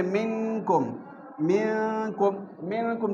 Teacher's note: نون ساکن کے بعد کاف آیا ہوا ہے، کاف حروف حلقی میں سے بھی نہیں ہے، لام را بھی نہیں ہے اور الف بھی نہیں ہے، تو یہاں پر غنہ کیا جائے گا۔